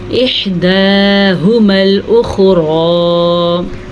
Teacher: یہاں پہ را پر پڑھی جائے گی، را کے اوپر کھڑی زبر ہے